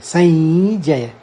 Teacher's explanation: अनुस्वार, ये नासिका से यानी नाक से निकलते हैं